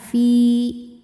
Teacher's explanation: sebab ada Ya Sukun didahului harakat kasrah cara baca huruf Fanya adalah panjang dua harakat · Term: Mad thi'i